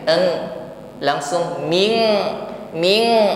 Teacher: nun sukun bertemu Kaf ada ikhfa ya di sini mengucapkan Min nun sukun kita samarkan pada huruf Kaf ketika kita sudah masuk atau siap kepada makhraj Kaf maka di sini ada bunyi ng